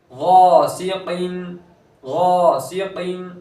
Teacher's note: गैन पूर हर्फ है तो अलिफ को भी पूर पढ़ेंगे, अलिफ मद्दा हो रहा है खींचेंगे एक अलिफ के बराबर, सीन को बारीक पढ़ेंगे खींचेंगे नहीं, कौफ ये हुर्फ मुस्तालिया में से है तो उसको पूर पढ़ेंगे।